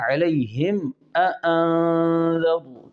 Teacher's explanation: علیہم کی میم پر ہم نے اظہار شفوی کرنا ہے